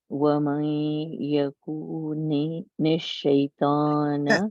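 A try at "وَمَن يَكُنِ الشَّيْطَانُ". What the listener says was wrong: کاف تھوڑا سا لمبا ہو کے دوبارہ پڑھو یہاں سے.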